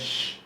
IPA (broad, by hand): ʃ